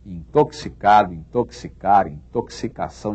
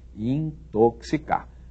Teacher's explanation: Esse X deve ser lido como se houvesse aí um C e um S, não é? Ou no alfabeto fonético um K e um S, para quem prefere essa linguagem, não é?